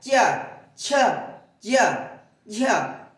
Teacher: क च ख ग घ अंग या अ वही आप च कहेंगे तो च देखिए जीभ कहां लग रही है आपकी च ज आपकी जो जीभ का आगे का भाग कहां लग रहा है? तालु में लग रहा है।